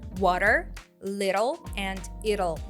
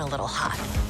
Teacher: It is common in American English to pronounce the letter T as flap T when it's placed between the two vowels, water. Flap T will often occur between a vowel and a dark L because the dark L is made up of two sounds, the schwa sound, followed by the L sound. And if you play the words little, it'll, slow, you will hear the schwa sound, which is a vowel, so that's why we hear flap T.